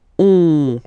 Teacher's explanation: then O-N, here goes like on, remember, in your nose